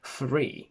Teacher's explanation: if i say three in cockney i will say free which is exactly like the adjective from freedom